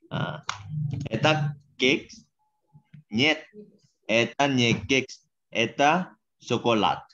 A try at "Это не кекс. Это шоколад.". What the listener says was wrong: Хорошо.